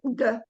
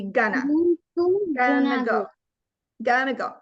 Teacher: it brings that g sound in the back of your throat